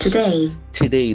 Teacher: the accent falls on the second syllable.